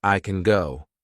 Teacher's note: we kind of add another g at the end of the word can